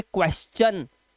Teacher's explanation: टी की जो ध्वनि होती है वो चा की हो जाएगी। जैसे यहाँ पे एस है, उसके बाद टी आई यू है ना, तो इसे पढ़ेंगे क्वेश्चन, तो चा का उच्चारण आया।